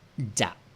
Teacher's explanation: Isang short vowel. Ang syllable ay dead short. Kaya ang tone na gagamitin ay low tone.